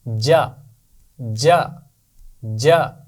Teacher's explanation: آپ کو یاد ہے نا جیم کا مخرج بھی یہی تھا, زبان کا درمیان اوپر کے تالو سے جوڑ کر ہم نے آواز ادا کی تھی